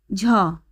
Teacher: দেখো চতুর্থ ধ্বনি মানে ঘোষ ধ্বনি, যেহেতু বলাই হয়েছে তৃতীয়, চতুর্থ এবং পঞ্চম ধ্বনি ঘোষ ধ্বনি, আর চতুর্থ ধ্বনির জন্য এটি মহাপ্রাণ ধ্বনি, কারণ বর্গের দ্বিতীয় ও চতুর্থ ধ্বনি হলো মহাপ্রাণ ধ্বনি। তাই এখানে ঝ ঘোষ ধ্বনি ও মহাপ্রাণ ধ্বনি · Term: ঘোষ মহাপ্রাণ